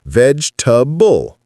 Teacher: The middle vowel vanishes. You can also think of it as vegetable almost. · Sometimes vegetable or vegetable both work. The key is dropping that middle e syllable.